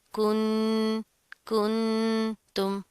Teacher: नून साकिन के बाद ता आ रहा है हरूफ इख्फा में से, तो यहाँ पर भी गुन्ना होगा